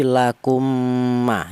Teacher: Jadi mim pertama dimasukkan ke mim yang nomor dua ini namanya idgham. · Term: idgham mli, idgham misli